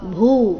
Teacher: ಜೀವಭೂತ ಭೂ ಮಹಾಪ್ರಾಣ ದೀರ್ಘ ಬರಬೇಕು